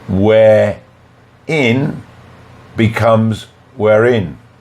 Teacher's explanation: Words that end in a silent R, as in where, followed by a second word beginning with a vowel, as in. Here, the final R is pronounced so we can link it to the next word.